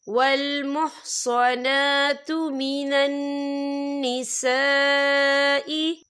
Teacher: ये मद जो है मद मुत्तसिल है, इसकी मिकदार 4 हरकत के बराबर है। तो हम इसे 4 हरकत के बराबर खींच के पढ़ेंगे।